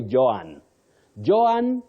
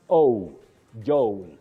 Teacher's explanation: you have the slight Glide or vowel Glide